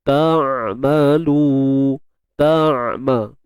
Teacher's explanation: huruf ain ni bila kita matikan, suara kita ni tidak terlalu tertahan, tak macam tu, dan tidak terlepas, tak kan. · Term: tawassut